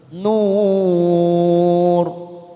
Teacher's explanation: Ilan nur, nur kita panjangkan selama 4 harokat, mat arid li sukun karena kita wakaf di sini, maka kita baca tafkim. Kita baca tafkim karena ada huruf ro yang didahului dhammah.